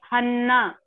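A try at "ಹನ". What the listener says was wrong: It is Hana. The single N, so Hana. Double N, Hana. You're stressing on Na.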